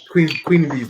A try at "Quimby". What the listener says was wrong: just pronounce Quimby's name as Queen Bee?